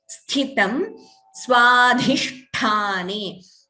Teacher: First Tha is Mahaprana, second is Alpaprana.